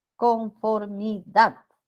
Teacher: la aguda u oxitona el acento recae en la última sílaba conformidad aquí está la sílaba tónica sí puede estar con tilde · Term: aguda u oxítona